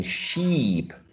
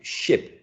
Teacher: For example, when we say E represented by this symbol, E as in sheep, the lips are tense, right? Tense. And when we say ship, the lips are lax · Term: lip tension